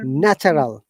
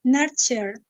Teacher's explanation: TU sound very often in British English we sound like cha.